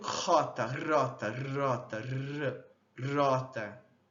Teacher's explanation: E algumas pessoas mais antigas, né, de outras épocas, também fazem essa consoante vibrante, cujo ponto é alveolar, traço vozeada